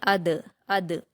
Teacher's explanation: ادراکا، اس میں حمزہ پر حرکت جلد پڑھیں گے، دال پر جزم ہے تو قلقلہ کے ساتھ حمزہ سے ملا کر پڑھیں گے